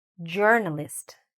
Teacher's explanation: So, where do you hear the stress? It's in the beginning